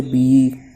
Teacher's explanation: یا ساکن سے پہلے با کے نیچے زیر ہے، اس لیے یا مدہ ہوگا۔ یا مدہ کو ایک الف کے برابر کھینچ کر پڑھیں گے، با یا زیر بی۔